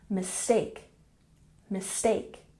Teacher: And mistake has emphasis on the second syllable.